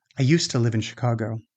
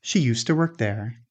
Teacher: Careful pronunciation might sound like used to. But in everyday speech, again, the d often merges with the following t. So, used to can sound like used to.